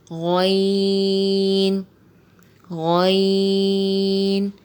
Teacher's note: غین جو ہے یہ موٹے حروف میں سے بھی ہے اور حروف حلقی میں سے بھی ہے. یہ حلق کے اوپر والے حصے سے ادا ہوتا ہے